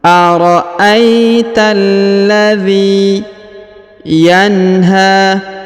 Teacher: huruf dhi dipanjangkan 2 harokat karena di depannya terdapat ya sukun. Meskipun tidak terdapat tanda titik 2 di bawahnya, tapi sudah dimaklumi karena setiap huruf alladhi selalunya di depan terdapat ya sukun, ya.